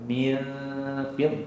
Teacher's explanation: nun mati bertemu dengan Fa di situ hukum ikhfa apa ikhfa Hakiki dengungnya dengung nipis